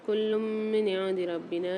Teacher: یہاں پر 2 پیش کی تنوین کے بعد میم مشدد آ رہی، یہاں بھی غنہ کر کے پڑھیں گے